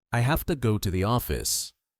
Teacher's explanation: Notice how the becomes very small. In fast English, it almost disappears.